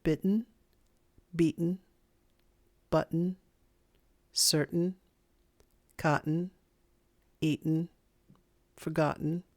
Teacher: the glottal stop occurs before an unstressed un sound